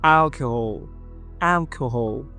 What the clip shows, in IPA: ˈælkəhɔːl